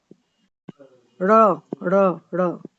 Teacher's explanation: तालु। ड़ ड़ ड़ ऊपर तालु को स्पर्श करती है तथा पीछे की ओर गिरती है तो उसका निचला भाग मूर्धा को छूकर यह ध्वनि उत्पन्न करता है।